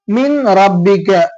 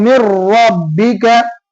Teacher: அப்ப நூனுடைய சவுண்டே காலி. இங்க இன்னோட சவுண்டு காலி ஆயிடும். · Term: இணைத்தல்